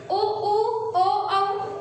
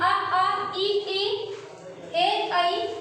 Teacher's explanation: वृत्तामुखी में हमने देखा है उ ऊ ओ औ, वहीं अ आ ई ए ऐ, जिसमें वृत्त के आकार का हमारा मुख नहीं होता है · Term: अवृत्तामुखी